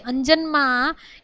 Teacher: પછી અંજનમાં એ તાલવ્ય અનુનાસિક છે